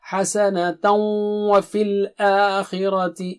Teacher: حسنۃ وفی الآخرۃ، حسنۃ وہاں غنہ ہوگا، غنہ یعنی ناک سے آواز، ڈبل اسٹریچ، 2 حرکت